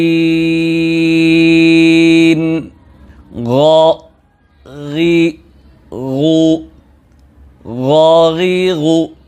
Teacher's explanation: গয়নের মাখরাজ হলো 3 নাম্বার মাখরাজ হলকের শেষ হতে গয়ন খ দুটো হরফ উচ্চারিত হয়।